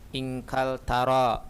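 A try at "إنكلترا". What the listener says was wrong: Inkaltara, ada tasdidnya.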